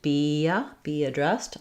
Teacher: As I move between be and addressed, be addressed, I have a little bit of vowel to vowel linking there. So I'm going to be connecting from the high front E to the of addressed, be addressed.